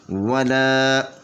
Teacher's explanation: یہ لام کے آگے الف ہے، تو یہ الف مدیہ ہے، الف سے پہلے زبر ہو تو وہ الف مدیہ ہوتی ہے، تو اس کو 2 حرکت کے برابر کھینچ کر پڑھیں گے